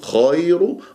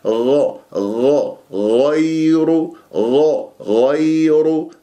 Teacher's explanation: الخاء في أدنى الحلق، والخاء يجري فيها صوت والنفس، فتقول خير غير، لا غ غ غير غ غير، والياء ياء لين، والراء مفخمة لأنها مضمومة غير، وكل مضموم فلن يتم إلا بضم الشفتين ضما، فلازم أنت تجيب الضم.